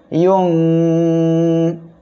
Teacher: এই 15টি অক্ষরের কোনো একটি অক্ষর যখনই আসবে তখনই নাকের বাসিতে নিয়ে গোপন করিয়া গুন্না করে পড়তে হবে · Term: ইকফা গুন্না